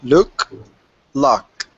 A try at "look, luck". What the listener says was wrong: Well done. Very good.